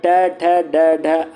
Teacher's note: ट वर्ग का उच्चार स्थान मुर्धा